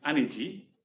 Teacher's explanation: S goes to j, standard thing. Glottal stop at the end, drops away